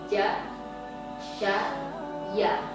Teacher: Jadi tengah lidah menuju ke langit-langit atau terangkat menuju ke langit-langit